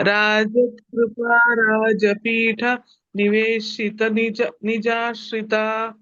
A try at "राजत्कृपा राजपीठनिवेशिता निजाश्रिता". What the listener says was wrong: After Rajapitha, can you not give a pause and chant? Take a breath after Rajat Kripa.